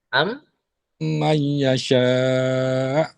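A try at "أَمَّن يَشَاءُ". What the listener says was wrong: Tapi nun mati bertemu ya tu kurang panjang. Haji punya gunah tu. Haji panjangkan sikit. Nun mati bertemu ya pun ada, idgham ma'al ghunnah juga.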